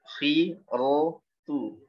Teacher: Kalau khof yang kasroh ini semi tebal. Ya, setengah tebal, setengah tipis.